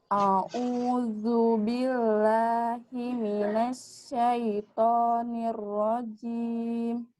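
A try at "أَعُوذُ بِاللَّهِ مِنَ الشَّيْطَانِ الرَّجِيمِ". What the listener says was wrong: Cuman untuk huruf shin-nya, tadi kan yang tengah lidah ke langit-langit itu, terus ada sifat namanya tafashi. Tafashi itu dia menyebar kayak gini. Nah, coba lamakan.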